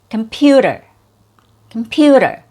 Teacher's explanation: The first syllable has a schwa or a reduced vowel · The second syllable has a real vowel sound, and this is your stressed syllable.